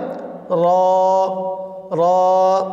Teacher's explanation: জিহ্বার মাথার উল্টা পিঠ উপরের তালুর সঙ্গে লাগিয়ে উচ্চারিত হয় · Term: রর মাখরাজ